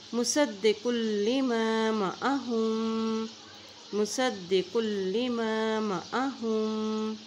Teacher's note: कॉफ की दो पेश को लाम के साथ मिला के पढ़ेंगे क्योंकि लाम के ऊपर भी शद है